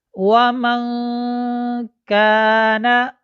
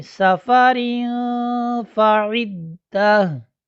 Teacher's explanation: नून साकिन हो या नून तनवीन हो, उसके बाद हुरूफ़ इख्फ़ा, ये 15 हरूफ हैं, उनमें से अगर कोई हर्फ आ जाए तो नून साकिन और नून तनवीन को उसके मखरज से पहले अदा करेंगे और आवाज़ नाक में जाएगी।